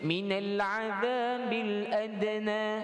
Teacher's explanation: Dia masuk minal tanpa dengung, tanpa menambah sifat lain. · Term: idgham izhar